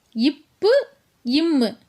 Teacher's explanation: இந்த ரெண்டு மெய்யெழுத்துகளும் மேல் இதழும் கீழ் இதழும் பொருந்துவதால் பிறக்குது